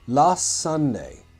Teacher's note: In this case, the S's blend together very dangerously.